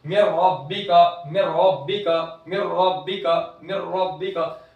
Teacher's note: नून की आवाज बिल्कुल भी गायब, बिल्कुल भी नहीं आएगी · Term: इदगाम ताम